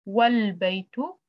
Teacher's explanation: the alif is dropped and the phrase is pronounced wal-baytu, not wa-al-baytu. So you can't say wa-al-baytu. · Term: Hamzatul Wasl